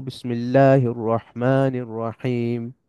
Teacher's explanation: রহমান মান আর হিম সমান লম্বা হবে